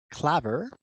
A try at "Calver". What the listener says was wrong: So the L and the A are the wrong way around.